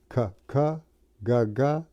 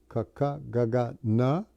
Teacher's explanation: Row means varga. So the first, they call them here gutturals. It's in the throat.